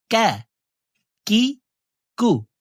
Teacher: কাফ হরফের উচ্চারণ জিব্বার গোড়া থেকে একটু আগে বাড়াইয়া তার বরাবর উপরের তালুর সঙ্গে লাগাইয়া উচ্চারণ করিয়া পড়িতে হয়